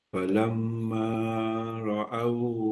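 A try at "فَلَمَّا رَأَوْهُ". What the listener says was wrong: Terlebih. Itu 3. Falamma ra'au itu 3. Falamma ra'au. 1, 2. Itu kelajuan dia.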